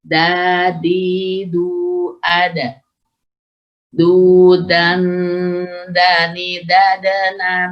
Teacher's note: Jadi di ujung tidak menggunakan ujung lidah, tapi punggung ujung lidah ke pangkal gigi seri. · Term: dal